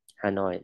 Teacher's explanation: Hanoi, nhớ âm, nhấn vào âm noi.